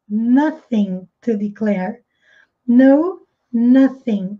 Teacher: esse TH com som de S com a ponta da língua presa entre os dentes